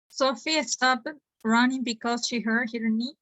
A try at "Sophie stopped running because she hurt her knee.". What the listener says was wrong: Stopped. Be careful with EDs. Stopped.